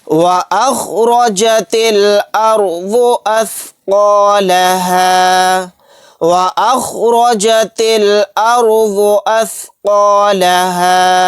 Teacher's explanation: یہاں پر را کو موٹا یعنی پر پڑھیں گے، کیونکہ را کے اوپر زبر ہے۔